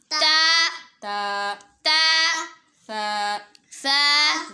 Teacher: با دونوں ہونٹوں کے اندر والے حصے کو آپس میں ملائیں گے تو با ادا ہوگا۔ تا زبان کی نوک اوپر کے جو سامنے والے دانت ہے اس کی جڑ سے لگے گی